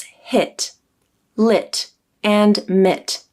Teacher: you should feel less muscle movement, less tension as you say the I vowel. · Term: lax vowel